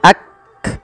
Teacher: sifatnya adalah sifat syiddah dan sifat ee Hames cara membacanya yaitu bacaan syiddahnya dulu yaitu Kaf itu ditahan suaranya Ak baru dikasih Hames Hames itu mengalirnya nafas maka yak ah